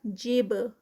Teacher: جب با کا کلکلا، با جو ہے وہ ساکن ہے